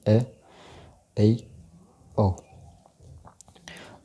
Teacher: इनके उच्चारण में मुख आधे से थोड़ा अधिक खुलता है, यानी विवृत से तो कम खुलता है लेकिन आधे से थोड़ा ज़्यादा, यानी मान लीजिए 70-75% मुख खुलता है, तथा जिह्वा मुख के मध्य से थोड़ी नीचे स्थित रहती है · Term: अर्धविवृत स्वर